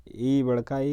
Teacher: तालव्य है, दीर्घ है क्योंकि दीर्घ हो गया, नग्न, संवृत और अवृत मुखी